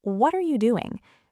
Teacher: Think about the phrase, what are you doing? The tiny word are is barely audible, often swallowed by the more important words.